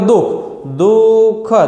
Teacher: એ દુઃખની વચ્ચે જે વિસર્ગ રહેલું છે મિત્રો એનો થડકારો કાંઈ અનુભવાતો નથી